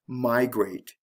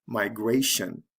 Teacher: Did you hear the stress here? The stress is on the first syllable with migrate. So it has to shift to the second syllable when we add the TION, migration.